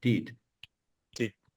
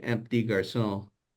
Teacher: you say un petit garçon, and the PT sound just kind of comes out together.